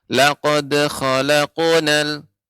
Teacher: Ya, qafnya belum tinggi. Ya, maka ketika qalqalah pada huruf qaf dia lebih tinggi, isti'la, naik